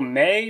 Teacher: the particle may, which ends with a glide, which is, for all intents and purposes, the same thing as a diphthong.